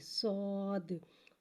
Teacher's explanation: صاد حرف مستعلیہ ہے، لہٰذا اس کی آواز حلق سے موٹی ادا ہوئے گی اور صاد میں سیٹی کو ظاہر کریں گے